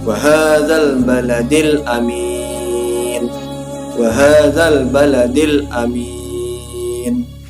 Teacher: huruf alif lam terdengar jelas dan tidak lebur dengan huruf qamariyah yang mengikutinya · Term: alif lam qamariyah